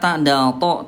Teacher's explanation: ta, dal, to, tempatnya sama, ujung lidah disentuhkan dengan pangkal gigi seri atas, sama tempatnya tapi beda sifatnya ya.